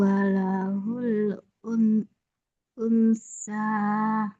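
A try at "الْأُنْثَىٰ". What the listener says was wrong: Jangan nempel suara nunnya. Huruf nunnya jangan nempel.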